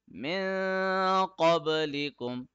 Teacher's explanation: we are hiding the sound of noon in our nose. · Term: ikhfa rule